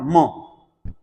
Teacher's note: ध्वनि छोड़ते समय उनका जो ध्वनि निकलती है मुंह से निकलने के बजाय नाक से निकल जाती है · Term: अनुनासिक